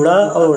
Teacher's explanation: जिन व्यंजनों के उच्चारण में जीभ की उल्टी हुई नोक ताल को छूकर झटके से हट जाती है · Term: उच्छिप्त व्यंजन